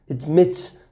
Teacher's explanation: stresses on the M, and it starts with a schwa